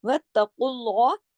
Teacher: काफ को मोटा पढ़ा जाएगा, और उसके बाद अल्लाह का जो नाम है उसे भी मोटा पढ़ा जाएगा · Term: इस्म जलाला